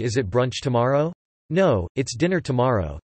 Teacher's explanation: the extra stress shifts from the last stressed syllable of the sentence, tomorrow, to the last stressed syllable of the emphasized word, dinner